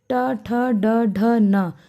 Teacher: जो हमारी जीभ का आगे वाला भाग है वो मुड़ जाता है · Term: मूर्धा